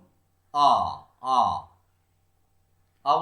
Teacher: এই আ উচ্চারণ করতে গিয়ে জিভটা আমাদের কোথায় আছে? জিভটা আমাদের একদম নিচে আছে। তাহলে যে স্বরধ্বনি উচ্চারণ করবার সময় আমাদের জিভটা একদম নিচে থাকে তাকে বলা হচ্ছে নিম্ন স্বরধ্বনি।